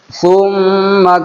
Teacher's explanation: ناک میں آواز چھپائیں گے، غنہ ہوگا